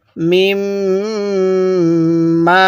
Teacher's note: এই মিমের মধ্যে গুনাহ করব কারণ মিমের উপর তাজদিদ